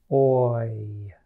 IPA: oɪ